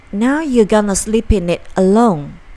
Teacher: 只是做舌头的位置，但是不送气，不把这个▁t▁的音给发出来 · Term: stop t